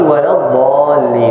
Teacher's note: الضاد فيه استطالة يعني تمطيط الصوت، يستطيل، يصبح طويل